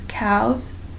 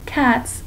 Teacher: cows which creates a Z sound cats which is just the regular s sound